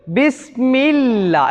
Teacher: அல்லாஹ்வுடைய வார்த்தைக்கு முன்னால் உள்ள எழுத்தில் கஸ்ரு செய்யப்பட்டு வந்தால் அல்லாஹ்வை மெல்லினமாக நாம் உச்சரிக்க வேண்டும்